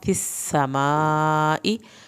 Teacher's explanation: सीन पे सीटी की आवाज़ भी निकालें, सीन की शद भी अदा करें